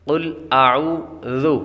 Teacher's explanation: ذال کو نرمی کے ساتھ پڑھنا ہے، یہاں پر سیٹ کی آواز نہیں آئے گی۔ قل اعوذ، زو کی آواز نہیں آئے گی، اعوذ نہیں پڑھنا بلکہ اعوذ۔